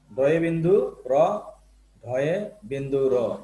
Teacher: জিহ্বার অগ্রভাগ কি করে উপরের সঙ্গে লাগে আবার নিচে এসে ও ধাক্কা দেয়, ঠিক আছে, এইভাবে তাড়িত হয় বিধায় এটাকে তারণজাত ধ্বনি বলা হয়। ডয়ে বিন্দু র, ঢয়ে বিন্দু র।